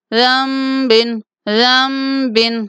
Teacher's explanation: جب نون ساکن کے بعد با آ جاتا ہے تو نون کو میم کے ساتھ بدل دیتے ہیں، اس لیے یہاں پہ نون نہیں میم پڑھیں گے۔